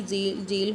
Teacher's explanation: the front of the tongue as active articulator is raised towards the hard palate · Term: पैलेटो एलवीलर